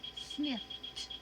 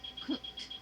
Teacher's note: that e was silent and that d had turned into a t